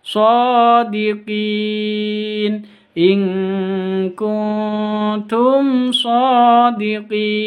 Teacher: shodiqin ini Qin ada bacaan madqi di diakhiri dengan huruf hidup berada di waqaf berarti Mad Arid lisukun panjangnya boleh dua harakat empat harakat atau enam enam harakat